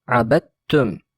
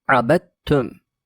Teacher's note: Dal harfi cezimli, T harfi ise harekeli. Bu durumda dal harfini T gibi okuruz. Yani T'nin üzerinde şedde varmış gibi okuruz.